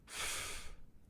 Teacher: In the case of the sound f, it is my upper teeth and lower lip that are restricting the flow of air